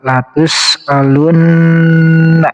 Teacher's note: nunnya juga bertasydid. termasuk huruf gunnah juga, berarti harus ditahan dari nunya 2 harokat